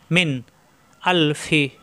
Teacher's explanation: এই নুন সাকিনের পরে হামজা আসছে ইজার হবে স্পষ্ট হবে গুন্না হবে না